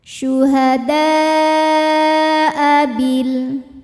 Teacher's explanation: Mad tabi'inya adalah alif yang sebelumnya fathah, hamzahnya a, ini satu kata pada kata syuhada'a, maka dal kita panjangkan boleh 4 boleh 5 harokat. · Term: mad wajib muttasil